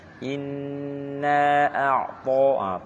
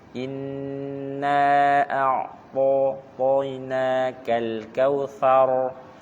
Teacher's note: To-nya tebal, jangan senyum, seram.